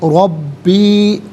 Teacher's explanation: را پر زبر ہے، را کو پر کر کے پڑھیں گے